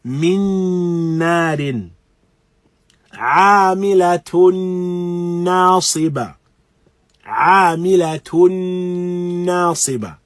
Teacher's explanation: Here, again, complete assimilation of the tanween into the noon that follows it. Complete assimilation of one letter into the other. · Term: idgham bi ghunna kamil